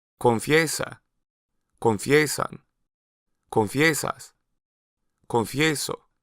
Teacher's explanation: notice that the stressed variation of the root has a distinct Y sound